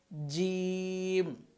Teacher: জিম জিহ্বার মধ্যখান উপরের তালুর সাথে লাগাতে হবে।